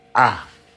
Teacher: So I, it's ah. So there's no I kind of diphthong there, it's just ah.